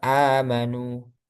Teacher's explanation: Mat badal di riwayat Hafiz itu 2 harokat, nggak boleh lebih. Misalnya amanu, nah, itu kan a-nya itu mat badal, nggak boleh amanu, nggak boleh lebih dari 2.